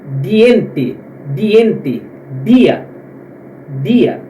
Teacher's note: O D ele é pronunciado como D do nordestino, aquele D na ponta da língua